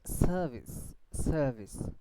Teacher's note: Service service because after a long vowel most of the cases after a long bowel in an British pronunciation and in RP accent the R will be silent and will not be pronounced